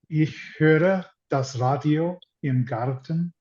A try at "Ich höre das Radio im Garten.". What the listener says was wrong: Extend the Ö a little bit, make it a little longer.